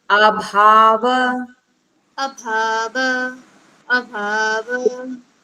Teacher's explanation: Bha is a Mahaprana. We have to stress on the Bha.